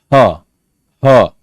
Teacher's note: sound production involving only the glottis called glottal